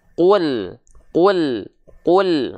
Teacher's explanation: dia dilafalkan dengan keadaan yang tipis seperti sambil seolah tersenyum